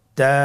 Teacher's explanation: তা হরফটি বারিক হরফ এবং এক আলিফ টেনে পড়তে হবে।